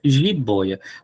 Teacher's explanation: jiboia tem ditongo aberto